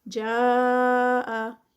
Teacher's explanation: جاء جو ہے یہ مد متصل ہے اور اس کے 4 کاؤنٹس ہوتے ہیں